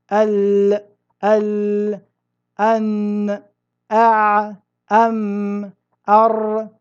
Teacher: أنت تلاحظ أن الصوت لا ينحبس تماما بل هو بين الجريان والانحباس فهذه صفة التوسط.